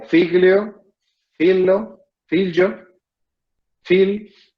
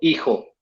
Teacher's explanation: la pérdida de la F inicial de lexemas latinos, de palabras latinas, que en otras lenguas persisten